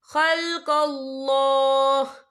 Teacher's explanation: وقف کی صورت میں ہا ساکن ہو جائے گا